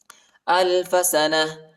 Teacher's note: وقف کی صورت میں تا کو ہا پر تبدیل کریں گے